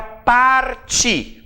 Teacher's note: Qual é a sílaba tônica dessa palavra? É o ti.